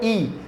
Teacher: ઈ તો તમારી જે જીભનું ટેરવું છે ને એ તાળવા તરફ જાય છે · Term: તાલવ્ય